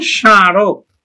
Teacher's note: শুরুতেই মফলা আছে, তাহলে এই মফলার উচ্চারণ হয় না, তবে সামান্য নাসিক্য ধ্বনির প্রভাব পড়ে।